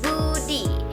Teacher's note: bunyi meletup di bibir tapi bersuara